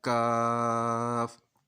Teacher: जहाँ से काफ अदा होना है उससे थोड़ा सा आगे मुंह की तरफ आ जाएंगे, तो ये बारीक काफ अदा हो जाएगा